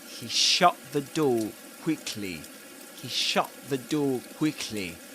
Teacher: There's a glottal stop at the end of shut.